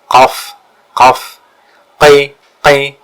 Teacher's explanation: qaf itu ada penekanan di tenggorokan, qaf, qaf, qi, qi.